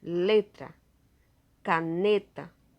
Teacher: A sílaba tônica, ou seja, a sílaba mais forte, é a penúltima sílaba. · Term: Paroxítonas